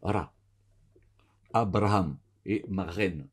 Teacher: le resh, c'est un R roulé